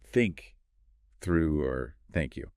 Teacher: For the unvoiced the, it's just air, no vibration. A common pitfall for, say, many French or Arabic speakers is substituting e or z sounds.